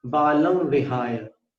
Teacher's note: ये बालम वाला अनुस्वार जो उसको विहाय के वी में मिलाना